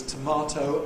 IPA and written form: təˈmɑːtəʊ (tomato)